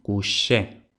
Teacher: el francés palataliza la secuencia K a sh